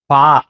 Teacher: உதடுகள் சேர்ந்து வரக்கூடிய சப்தம்